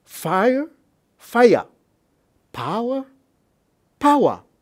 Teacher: Cameroon English speakers will divide that type of syllables into two syllables · A glide is also called semi-vowel, semi-consonant, which is y and w. So Cameroon English speakers will use the sound y and the sound w to divide a standard English, a standard British English monophthong into two syllables. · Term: glide formation